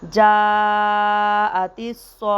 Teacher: اگر وقف کریں گے تو یہ تا کو ہا میں چینج کر دیں گے